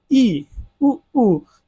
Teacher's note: इसमें क्या होता है, लगभग मुख द्वार क्या होता है, बंद होता है। जब हम स्वर का उच्चारण करते हैं तो लगभग बंद सा जो है हमारा मुंह दिखाई देता है। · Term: संवृत स्वर